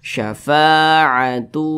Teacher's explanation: Nah didengungkan itu suaranya itu ditahan atau dipanjangkan kira-kira panjangnya itu dua katukan atau dua harakat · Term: idgham bhunah